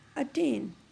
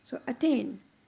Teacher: Now we are not putting any stress on the word, on the first syllable, that is a, and we are putting the stress on the second syllable, that is tain. So attain. Iambic is unstressed and stressed.